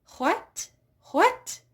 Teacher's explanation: It's a little bit of an H, but it's definitely quite silent, quite quiet in there.